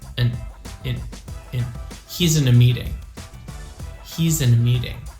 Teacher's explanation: it's not really reduced but it is almost never stressed so because it's always an unstressed syllable it becomes very small